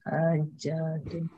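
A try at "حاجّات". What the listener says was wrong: Pakai tasdid ya. Kalau tidak pakai tasdid nanti hajat, kebutuhan-kebutuhan. Ini hajatun karena mufradnya adalah hajatun, pakai tasdid.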